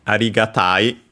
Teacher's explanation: Yes, accented on the ta.